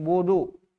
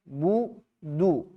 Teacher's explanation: baca dhammah itu jangan ditebalkan, jangan budu, tapi du, tipis.